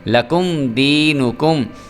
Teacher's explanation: میم ساکن کے بعد آ گیا دال، لہٰذا یہاں پہ غنہ نہیں ہوگا اور یہ ہوگا اظہار شفوی